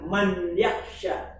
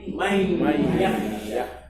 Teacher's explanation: Nunnya gabung dalam huruf ya atau lebur masuk dalam huruf ya. Makanya dia dikasih tasydid biar orang awam membaca dengan jangan man yakhsha. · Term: idgham